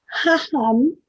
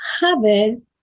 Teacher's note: La H se pronuncia al modo de las lenguas del Medio Oriente y siempre toma el sono aspirado característico de ellas.